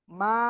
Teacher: আর একটু বলি, মা, এই যে মা বলে আমরা যে টেনে পড়লাম, মিম জবর মা, মিমের উপরে, তো একটু সময় ক্ষেপণ করলাম, এইটাকে বলা হয় মাদ।